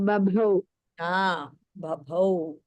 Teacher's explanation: The second Bha is Mahaprana.